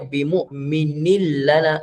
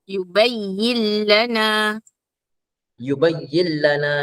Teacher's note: Cuma bila bertemu ra dengan lam, hukumnya idgham bila gunnah tanpa dengung, terus masuk pada lam.